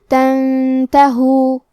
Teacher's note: تا حروف الاخفاء میں سے ہے اور اخفاء کا معنی ہے چھپا دینا، تو ہم نون ساکن کو چھپاتے ہوئے اور غنہ کے ساتھ یہ حکم کو ادا کریں گے